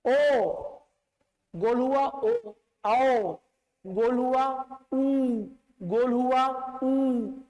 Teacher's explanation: जिन स्वर के उच्चारण में होठ गोल हो रहा है, वृत्त बन रहा है, वो वृत्त मुखी स्वर है।